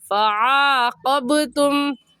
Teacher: عین حلق کے درمیان کے حصے سے عین نکلتا ہے، عین کو نکالیں گے، اور با حروف قلقلہ میں سے ہے، قلقلہ کریں گے، یعنی حرف کو ہلا کر پڑھیں گے